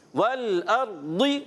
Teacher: واو ہونٹوں کی گولائی سے, لام ہلنا نہیں چاہیے, اور حمزہ کو کلیئر ادا کریں گے, اور را کو پر رکھیں گے کہ جب را ساکن ہو اس سے پہلے زبر آ جائے یا پیش آ جائے تو را کو موٹا کر کے پڑھتے ہیں.